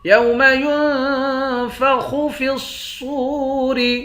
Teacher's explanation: صاد کو واو کے ساتھ ملا کر ایک الف کے مقدار کھینچ کر پڑھیں گے۔